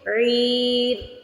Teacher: پہلے عی کو کھینچیں گے پھر را کی آواز آئے گی